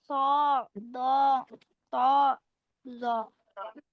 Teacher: Terkepung suara di antara lidah dan langit-langit ketika mengucapkan huruf itbak